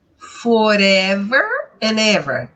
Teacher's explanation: terminou com uma consoante começou com uma vogal eu já faço a ligação faço o link